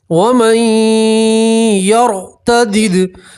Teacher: तो नून को आपने या के अंदर मिला दिया तो नून नहीं पढ़ेंगे, मीम को सीधा आप या से मिलाएंगे और एक अलिफ के बराबर गुन्ना करेंगे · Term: इदगाम माल गुन्ना